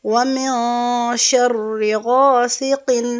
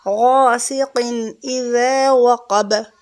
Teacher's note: سین کی آواز سیٹی کے ساتھ